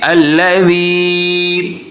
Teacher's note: ہم مد منفصل بنا کر اس کو پڑھیں گے، الذی 3 الف کے برابر